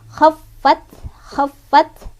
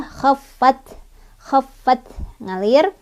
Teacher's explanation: ta-nya ada sifat hamsnya, jadi ada aliran udara ya